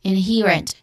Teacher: So the stressed syllable has a long e sound.